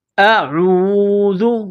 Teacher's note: گے، ہزوا، ہزوا، قال، قاف کو موٹا کرنا ہے، قال اعوذ، عین کو واو کے ساتھ ملانا ہے، اعوذ، ذال کو باریک کرنا ہے